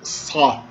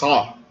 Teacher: Sa é um S pronunciado com um pouco de fricção na garganta. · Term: S gutural, velarizado